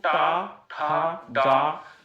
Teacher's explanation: मूर्धन्य ध्वनि जो भरते हो, बोलो टा, जीभ के ऊपर वाला जो हिस्सा है, जब आप बोल के देखो टा ठा डा, तो जीभ के जो ऊपर वाला हिस्सा है उस पे बल पड़ता है, उस पे जोर पड़ता है।